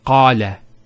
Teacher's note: Notice the elongation of the A sound. Qala. Not qala.